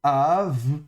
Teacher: Et donc ça va se lire av, donc un bet spirant, fricatif, donc sans dagesh, donc ça se prononcera ve.